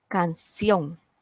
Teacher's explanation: So, la palabra canción, la sílaba tónica es sion. Y esta palabra es aguda porque la sílaba tónica está en la última sílaba